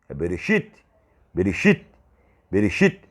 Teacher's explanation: Quando Hirik e Yud, como vogal longa, aparece juntamente com uma consoante, faz com que de fato não seja lido Bereshit, não é Bereshit, é Bereshit. Agora, só que o Tav, ou tal, como alguns gostam de chamar, ele se torna quase que impronunciável. Então você não pode ler Bereshit como se fosse TE.